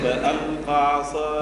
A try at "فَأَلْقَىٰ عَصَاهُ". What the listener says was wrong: لا هنا المد فألقى هذه اللي فيها مد.